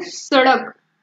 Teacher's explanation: इस वर्ण का उच्चारण करते समय जो हमारी जीह्वा होती है वह मूर्धन्य भाग को टच करके बहुत ही जल्दी, जिसको हम कहेंगे कि एकाएक निकलती है, जैसे सड़क जो हमारा ड है वह तुरंत ही बाहर मूर्धन्य को टच करके आगे बढ़ता है। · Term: उच्छिप्त व्यंजन